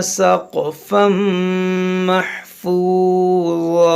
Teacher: यहाँ देखें सक़, ये क़ाफ में क़लक़ला करेंगे, यहाँ तनवीन के बाद मीम है तो यहाँ पर इदग़ाम करेंगे। यहाँ पर हमारी सांस टूट गई तो हमने इस दो ज़बर को अलिफ से बदला।